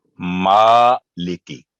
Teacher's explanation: میم پر کھڑی زبر ہے, تو اس کی آواز ہم 2 سیکنڈ لمبی کریں گے